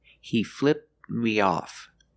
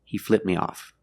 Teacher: The tongue goes up a little bit, but you don't hear the T sound.